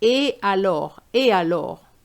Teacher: you don't make a liaison with ET, which means and. You needed to say et alors, et alors. · However, this was incorrect because you don't make a liaison with ET, which means and.